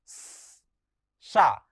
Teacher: क्योंकि जब ये हम वर्ण बोलते हैं, चाहे श, चाहे श, चाहे सा और चाहे ह, तो इसमें तालव्य तालु का प्रयोग होता है, मूर्धन्य में मूर्धा का प्रयोग होता है, जिह्वा का। दंतव्य में सा जब हम कहते हैं तो हमारे दांतों के बीच से एक हवा जैसी निकलती है। आप ये अनुभव करेंगे तो यह हवा गर्म हवा होती है। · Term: दंत सा